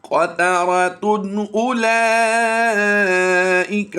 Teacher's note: غَبَرَةٌ تَرْهَقُهَا قَتَرَةٌ اب یہاں پر بھی دو پیش کی تنوین ہے اور اس کے بعد حروف حلقی میں سے حمزہ آ گیا تو اب یہاں پر ہم نے غنہ نہیں کرنا